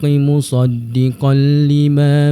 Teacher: ada tanwin bertemu dengan huruf lam. Jadi kat situlah terdapatnya hukum idgham bila gunnah, iaitu masuk tanpa dengung, touch and go.